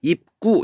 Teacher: 이 기역이 이렇게 쌍기역으로 바뀌어요. 된 소리로.